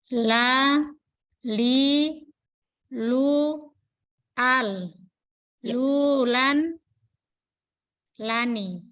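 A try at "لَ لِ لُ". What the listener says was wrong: Ya, insya Allah sudah tepat itu Bu.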